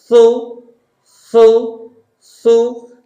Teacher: জিহ্বা দেখা যাবে হালকা, ঠোঁটটা গোল হবে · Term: সা পেশ